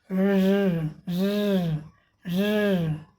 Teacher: Throat में गले में कंपन भी होता है।